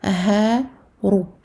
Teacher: Ra mufakhamah à cause de la dhamma.